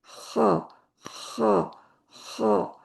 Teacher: خا بالکل جڑ کی تالو کے اینڈ پہ نرم حصے کو لگنا